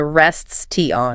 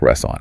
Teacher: The t vanishes entirely into the ether to allow the final s to slide directly and smoothly into the o. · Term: elision